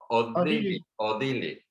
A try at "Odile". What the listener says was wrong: Odil, así nada más, sin la E, Odil.